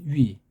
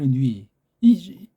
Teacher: 이거는 우에다 이 두 개 소리 나야 돼요. 우에다가 이라는 입모양 우라는 입모양 꼬꼬르다 그 꼬를 무너뜨리지 않으면서 이 소리 나려고 해보십시오.